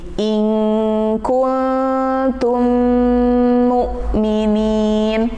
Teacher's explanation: Antara ikhfa, in kun itu durasinya lebih cepat dibanding tummu